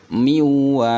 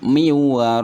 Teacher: Nun sukun ketemu dengan huruf wawu. Suara nunnya ini akan hilang. Miwaraihi, bukan min waraihim tapi miwaraihim. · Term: idgham bi gunah